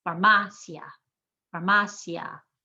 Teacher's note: The I and the A stay together. They're one sound.